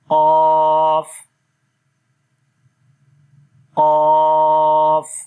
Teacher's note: زبان کی جڑ کو جب اوپر تالو کے نرم حصے کے ساتھ لگائیں گے تو اس وقت قاف ادا ہوگا۔